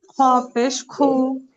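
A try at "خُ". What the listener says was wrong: খ উচ্চারণটা আপনার একটু সুন্দর হবে, হ্যাঁ। খ পেশ খু,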